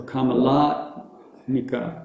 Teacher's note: So there's only one emphasis, and it's not on the end, which is it's different from all the rest. It only has one long A, and that's the middle one, La.